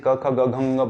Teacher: बोलो तो आप कंठ पे जोर पड़ता है, तो यह है कंठ्य।